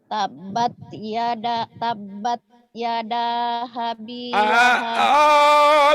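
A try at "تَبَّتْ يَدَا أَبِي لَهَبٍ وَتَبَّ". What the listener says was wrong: Bukan ha tapi a. Jadi stres ya. Tabat yada abi bukan habi.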